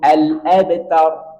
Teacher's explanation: Roknya ditebalkan karena sebelumnya fathah, maka tebalkan.